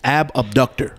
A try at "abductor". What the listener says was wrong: I think you're mispronouncing. I think it's called the abductor, not the ab abductor. It's abductor.